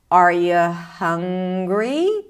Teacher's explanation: I'm keeping my intonation rather flat until I reach the last word